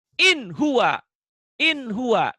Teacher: Kalau nun mati atau tanwinnya bertemu dengan huruf idhar. Tetap N dibacanya.